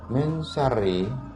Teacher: Perhatikan huruf nun sukun atau nun yang mati pada kalimat min syarri. Min syarri pada kalimat di atas disamarkan Maksudnya, bacaan nun matinya disamarkan karena termasuk ke dalam bacaan ikhfa hakiki.